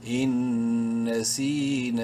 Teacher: نون ساکن کے بعد نون ہے اور نون مشدد ہے، غنہ کریں گے نون میں